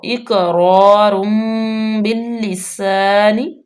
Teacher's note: قاف قلقلہ حروف میں سے ہے تو یہاں پہ ساکن بھی آ گیا تو اس کو ہم ہلا کے پڑھیں گے، ایکو پیدا کریں گے ، جس طرح ایکو میں آواز پلٹ کے آتی ہے نا،